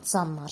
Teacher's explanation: N-dan sonra l gələrsə, l tələffüz olunacaq n kimi. Məsələn, deyirəm ki, canlar olacaq canlar şəklində.